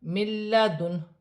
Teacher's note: نون ساکن کے بعد لام آ رہی ہے تو نون ساکن میں غنہ نہیں ہوگا